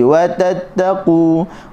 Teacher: huruf ta, wa tatta, hujung lidah digusi.